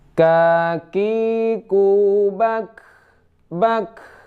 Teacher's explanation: Nah, ada sedikit angin yang keluar saat sukun. · K ini di tenggorokan paling di lidah pangkal yang agak ke atas sedikit, yaitu k ada sedikit angin ya. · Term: huruf k